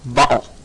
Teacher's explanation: When the vocal cords are tightly closed, they can produce a glottal stop, like in the British Cockney word bottle.